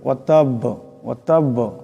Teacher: বার উপর তসদিদ আছে, আওয়াজটি একটি জটকার মতন উচ্চারণ হবে।